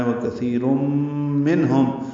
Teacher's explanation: را کو تنوین کی، دو پیشوں کی تنوین کی وجہ سے پر پڑھیں گے اور میم سے ملائیں گے. ادغام ہوگا، ادغام ناقص غنہ ہے.